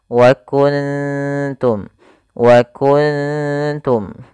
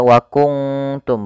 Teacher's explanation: membacanya yaitu suara nunnya disamarkan kepada huruf tnya wauntum waunum maka suara Nun Harus disamarkan kepada huruf ta bukan Bukan dibaca wtum bukan nanti itu bukan makhraj daripada huruf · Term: ikhfa Hakiki